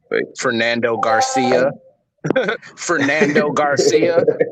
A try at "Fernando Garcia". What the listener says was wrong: No, you're saying it wrong. You gotta roll your tongue, Fernando. Fernando Garcia.